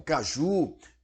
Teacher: tem o acento tônico ou seja o assento da pronúncia a a intensidade maior ao pronunciar a palavra constando na última sílaba das das das sílabas que compõem uma palavra oxítona sílaba tônica